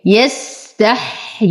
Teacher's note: نصبر على السين فيها رخاوة وهمس، أيضا نصبر على الحاء. ننتبه هنا أنه لدينا ياءين، ياء أصلية وياء زائدة، فنعطي الياء حقها.